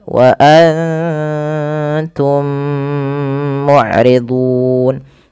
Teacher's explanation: mati bertemu mim tahan dulu dua harakat wa Anum mudun karena mim mati bertemu dengan mim Itu ada bacaan Idgham Mimi dan caranya adalah kita menahan bunyi mim ya kemudian berfal mudun ada Mad alid di sukun kita panjangkan